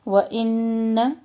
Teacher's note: نون مشدد غنہ اور نون کا زبر لمبا نہیں کرنا